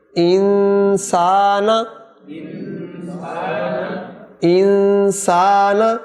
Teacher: نون ظاہر نہ ہو، پھر سنیں، انسانہ نہیں ہوگا، ان ناک میں آواز آئے گی صرف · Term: اخفاء